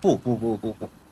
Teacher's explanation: চাইনিজরা যখন কথা বলে তখন কিন্তু বু বলে না, তখন পু বলে